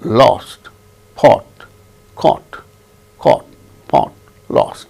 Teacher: In English, we do not have O, lip rounding. There is no lip rounding when we utter O sound. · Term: o without lip rounding, without lip rounding